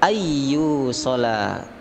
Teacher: langsung nun mati bertemu ya, idgham bi gunnah